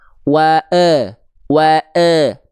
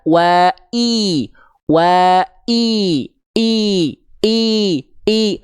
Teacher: wa e kalau diangkat wa i wa i i i i vokal I hanya akan sempurna ketika Tengah lidahnya diangkat